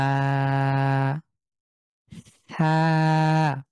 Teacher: থা, পাতলা জিভ বের হবে। আ সামনের জিভ দাঁতের সাথে লাগবে এবং বাতাস বের হবে পাতলা করে।